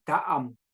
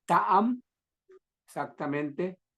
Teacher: se oye bien que cae el saltillo y continúa con am